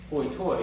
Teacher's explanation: have a diphthong where instead of I, they say oi